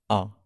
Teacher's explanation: आ के उच्चारण में हमारा मुंह सबसे अधिक खुलता है, इसीलिए इसे विवृत स्वर कहा जाता है।